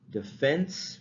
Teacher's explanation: We say defense because the stress is on the second syllable, defense, right?